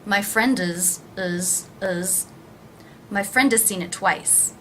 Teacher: the word has is pronounced without the H and again the vowel sound is reduced to the schwa